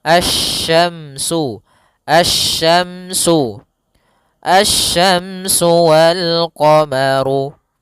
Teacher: langsung ke huruf shin, makhrajnya dari tengah lidah kita